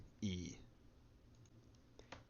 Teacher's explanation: E is simple, just a closed front unrounded vowel